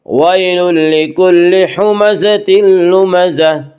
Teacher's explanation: ويل یالین وہ یا جو ساکن اس سے پہلے زبر ہو، یالین کو نرم آواز کے ساتھ جلدی پڑھیں گے۔ ویل لکل میں ادغام بلا غنہ ہوگا